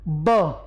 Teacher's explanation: ब होठ बंद करके ही बोलोगे, ओष्ठ भी है। पर देखिए महाप्राण नहीं है, ये अल्पप्राण होता है।